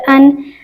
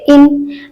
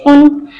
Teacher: ان حروف کی ادائیگی ہم اس طریقے سے کریں گے کہ آخر پر نون ساکن کی آواز نکلے گی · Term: تنوین